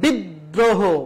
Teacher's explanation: ফলা থাকবে ওই বর্ণটির দৃত্ত উচ্চারণ হবে যেমন বিদ্রোহ এই যে দ এর সাথে একটা র ফলা রয়েছে সেজন্য দ বর্ণটা দুইবার উচ্চারণ করা হয়েছে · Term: দ্বিত্ব উচ্চারণ